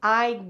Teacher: This reduced word gotta, pronounced God with a D, even though there's a T, is really I have got to admit.